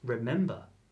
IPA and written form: rɪˈmɛmbə (Remember)